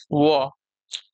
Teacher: इसके उच्चारण में ऊपर के दांत और निचला ओठ जो है परस्पर मिलते हैं। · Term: दंत्योष्